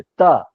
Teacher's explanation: ता पूरा दांत से टच हो जाता है